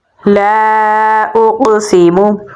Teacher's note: क़ाफ को पुर यानी मोटा पढ़ेंगे। क़ाफ हरूफ क़लक़ला में से है तो यहाँ पर हम क़लक़ला करेंगे · ला को लंबा पढ़ेंगे क्योंकि इसके आगे अलिफ मद्दा है। अलिफ के ऊपर मद है तो इसे लंबा पढ़ेंगे। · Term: मद्दे मुनफसिल